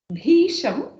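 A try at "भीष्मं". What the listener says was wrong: No, read it again. Bhishmam. See, Shakara is a half letter attached with the Makara. So it doesn't have, it's no Bhisha. It is Bhishmam.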